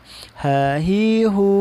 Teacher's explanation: ha itu keluarnya dari pangkal tenggorokan